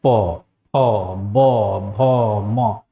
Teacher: दोनों ओठ है वह एक दूसरे को स्पर्श करते हैं